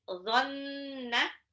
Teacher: ingat dha itu dia satu makhraj dengan zal, ya. Dia sama ujung lidah seperti mau digigit. Dhanna, nunnya gunnah.